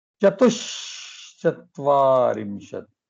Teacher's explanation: So the Visarga changed into the Sakara, and the Sakara further changed into the Shakara. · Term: Talavya Shakara